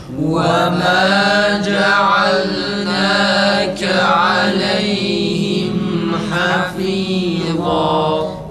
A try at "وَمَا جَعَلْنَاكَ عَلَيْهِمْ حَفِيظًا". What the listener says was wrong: Farın esresi iyi çıksın arkadaşlar.